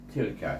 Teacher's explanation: ada dua suku kata saja, satu ta dengan lam dimatikan, bunyi til yang di huruf kaf itu baris di atas ka.